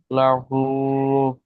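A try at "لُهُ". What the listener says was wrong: লাম পেশ লু আর হা পেশ, হা উল্টা পেশ, লু আর হু কি হয়? জি তাহলে আপনি লাহু বলছিলেন, লুহু হবে।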